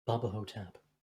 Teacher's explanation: I think I had to do the breathy voice for it.